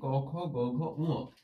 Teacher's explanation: এই জিহ্বা মূল থেকে উচ্চারিত হয় গ, খ, গ, ঘ, ঙ, এই কারণে এগুলোকে বলা হয় কণ্ঠ বা জিহ্বা মূলীয় বর্ণ